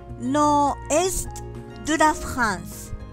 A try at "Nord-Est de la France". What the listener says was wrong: Attention, R. Nord. Il faut entendre R. Nord-Est de la France.